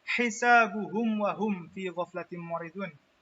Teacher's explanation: Kemudian cara membaca idhar syafawi yaitu bunyi pada mim sukun diucapkan secara jelas, lebih-lebih jika bertemu huruf waw dan fa, supaya tidak terdengar samar atau ikhfa